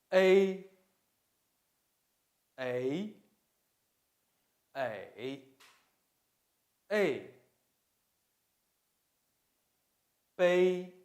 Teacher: The tongue is raised gradually. The mouth changes from being half open to closed when pronouncing A. A sounds like A in sleigh and eight. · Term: compound final